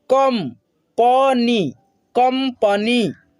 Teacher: म के रूप में इस अनुस्वार का उच्चारण होगा